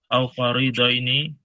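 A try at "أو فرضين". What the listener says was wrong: Au fardo ini, bukan farido ini. Fardo ini.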